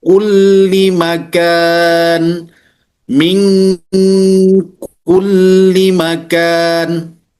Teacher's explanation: Nah, ini dia ikhfa ab'ad. Kemudian huruf yang kedua adalah huruf kaf. Engnya itu lebih tipis.